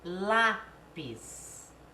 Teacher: tônica por a penúltima então olha aqui se exemplo lápis é a sílaba tônica não é última é a penúltima · A sílaba tônica não é a última, é a penúltima, é o lá.